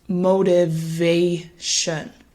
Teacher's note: So it won't sound like motivation, although there is still a louder and longer emphasis on that third syllable, motivation.